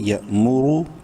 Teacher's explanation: میم پیش مو، یا مو. رو کو منہ بھر کے پڑھنا ہے، رو پیش رو، پیش کی وجہ سے